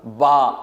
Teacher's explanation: جب دونوں ہونٹ آپس میں ملے اور تری والی حصے سے ادا ہوگا